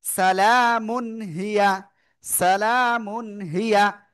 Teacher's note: ইজহারের অক্ষর হা আসছে, এই জন্য আমরা গুন্না করব না। সালামুন, এভাবে বলা যাবে না, বলতে হবে সালামুন হিয়া, সালামুন হিয়া।